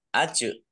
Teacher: Ajron azima. Jim sukun bacaan kolkolah, dibaca memantul, ditampakkan pantulannya.